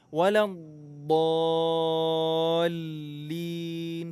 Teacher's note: Huruf dhad di sini ada tasydid. Jadi tahan dulu.